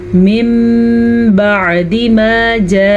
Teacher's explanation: میم پڑھیں گے، نون نہیں پڑھیں گے اور غنے کے ساتھ پڑھیں گے